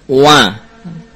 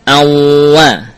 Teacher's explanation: Wa tidak memiliki gunnah, ya, sehingga hindarkanlah suara yang melewati khoysum tatkala kita membaca huruf waw